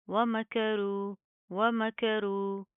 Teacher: را کو پروپر منہ کو پور کر کے پڑھیں گے موٹا پڑھیں گے